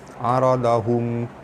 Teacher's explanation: Aradahum, mim mati bertemu ain, hukumnya izhar syafawi, dibaca terang jelas tanpa dengung